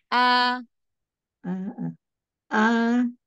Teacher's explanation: Hamzah dari tenggorokan bagian bawah jangan agak ke tengah